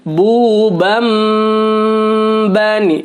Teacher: Maka bacanya ditahan patukan dan suara nun atau nun sukun atau tanwinnya berubah menjadi bunyi suara mim sukun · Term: iqlab